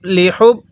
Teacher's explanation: এই হা গুলো উচ্চারণ করার সময় মুখ দিয়ে হালকা বাতাস বের করব